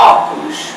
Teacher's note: sabe que o som é aberto você vai acentuar o primeiro ó da palavra óculos